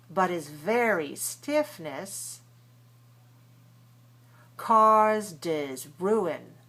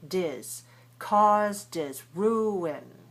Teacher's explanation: all of these H's in the pronouns disappear because we're not stressing them for any reason and they're in the middle of the phrase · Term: omit the H